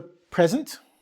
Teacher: We put the emphasis on the front, PRE-sent, a thing.